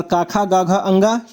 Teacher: काखा गाघा अंगा ये कंठ से बोला जाता है